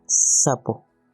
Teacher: es silbante alveolar sin voz y suena como la S en la palabra sapo.